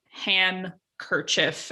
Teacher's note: what's happened is the D sound has disappeared first. And then when you get NK or NC, the sound pops up in the middle, just like in words like drink and ink and all of those other words.